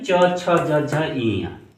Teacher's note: तालव्य यानी जो तालु से बोले जाते हैं, जीभ जो है तालु का स्पर्श करती है जिन वर्णों के उच्चारण में, उसे तालव्य कहते हैं।